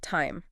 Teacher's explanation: If you say it slowly, it's t i e m. Your mouth moves from an a sound to an e sound. It glides.